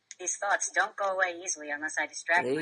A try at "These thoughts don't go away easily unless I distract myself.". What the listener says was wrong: These thoughts don't go away easily unless I distract myself and fall asleep. You are very monotone.